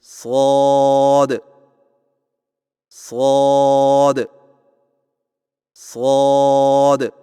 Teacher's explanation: آئیے مشق کیجیے، شین شین شین صاد کی ادائیگی میں زبان کی نوک کو سامنے والے نیچے کے دو دانتوں کے کناروں سے مضبوطی سے لگا کر اور زبان کے پچھلے حصے کو تالو کی طرف بلند کرتے ہوئے موٹی اور سیٹی جیسی آواز میں پڑھیں